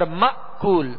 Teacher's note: یہاں حمزہ ساکن ہے، حمزہ کو جھٹکے کے ساتھ ادا کریں گے. اور مأکول، دونوں ہونٹوں کو کامل گول کر کے یہ پیش اور یہ مد ادا کرنی ہے.